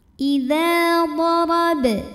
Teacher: huruf ra dibunyikan secara tafkhim karena barisnya di atas, maka bacanya tebal. Darab, huruf ba sukun dihukumi dengan qalqalah sughra karena huruf qalqalahnya ada di tengah ya, dan sukunnya asli, maka dibacanya dipantulkan dengan pantulan yang kecil.